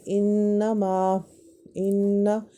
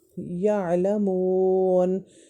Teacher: میں نون طرفیہ یا ذلقیہ اس کو ہم کہیں گے، اور نون میں آواز باہر نہیں آتی بلکہ اندر کی طرف جاتی ہے اور ناک میں ہمارے چلی جاتی ہے آواز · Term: غنہ